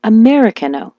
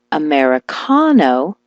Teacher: switch the stress to the car like Americano